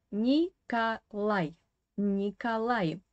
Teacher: this o is an unstressed weak position without stress and it should be pronounced as a